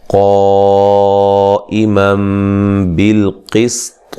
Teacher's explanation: यहाँ नून तनवीन का इक़लाब है, गुन्ना करेंगे